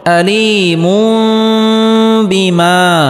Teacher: আযাবুন তানবিনের পরে ইকলাবের হরফ বা আসার কারণে এখানে ইকলাব গুন্নাহ করে পড়তে হবে, অর্থাৎ তানবিনকে ছোট মিম দ্বারা পরিবর্তন করে পড়তে হবে।